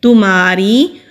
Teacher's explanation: تمہاری، میم کے اوپر زبر ہے، آگے خالی الف ہے، الف مدہ ہے، را کے نیچے زیر ہے تو را کو باریک پڑھیں گے